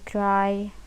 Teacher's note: It is the diphthong that actually implies the amplest articulatory movement of the speech organs that start from the position of an open vowel between front and back, then it glides towards A.